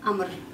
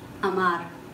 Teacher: For example, even though this word has two identical vowels, which is two A's, according to the rule, the first A, which is in the first syllable, has a stress, so it's pronounced clearly, but the second A is unstressed vowels, so it won't be pronounced. It will be pronounced like Amr, not Amar.